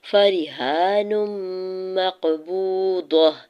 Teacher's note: ہا کے اوپر کھڑی زبر ہے، دو حرکت کھینچ کے ادا کریں گے اور نون کی دو پیش کی تنوین کو میم مشدد کے ساتھ ملاتے ہوئے ادغام مع غنہ کا رول اپلائی ہو رہا ہے.